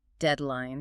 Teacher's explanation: Notice how the stress falls really heavily on the first syllable.